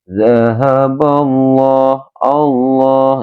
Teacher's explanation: apabila ada lafzul jalalah sebelumnya ada huruf kok berharakatnya fathah, maka dinamakan ini lam tafhim